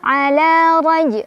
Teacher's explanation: Innahu ala lam at-tabi'i, karena ada fathah berdiri di atas huruf lam, dibaca panjang 2 harokat. Ala raj, ro-nya dibaca secara tafkhim karena ro berbaris fathah, jadi ditebalkan.